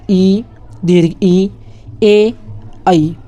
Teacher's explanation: अग्रस्वर क्या होते हैं? जो जीभ के अगले हिस्से से उच्चारित किए जाते हैं, जैसे कि ई, दीर्घ ई, ए, आई।